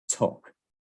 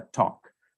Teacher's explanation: I'm going to be closing the mouth with the tongue towards the front part of the mouth, just behind my upper teeth, towards the alveolar ridge.